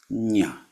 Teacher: the same place where you would say ja but you make it a nasal sound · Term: equivalent nasal